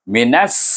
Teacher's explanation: gabungkan nun, bunyi nun dengan mahraj sin. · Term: idgham syamsi